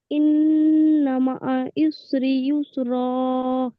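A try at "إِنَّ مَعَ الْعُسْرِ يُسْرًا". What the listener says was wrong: আমি বলেছি লামটি একটু ধরে রাখবেন। ইন্নামা আল উসরি ইউসরা।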